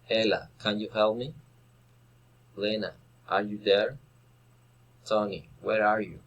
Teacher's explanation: Direct address, rising intonation.